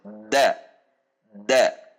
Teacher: Sementara huruf dal itu memiliki sifat al-jahar dan asyiddah, sehingga cara mengeluarkan hurufnya adalah kering, tidak ada dorongan atau dibenturkan pada titik makhraj, tidak ada gesekan, tetapi menekan dengan kuat pada titik makhraj